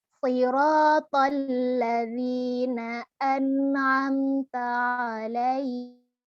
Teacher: Alaihim, him juga ya, him juga harus dibaca secara jelas. Ha domirnya juga harus ditegaskan bahwa dia adalah huruf ha yang besar, bukan yang ha tipis.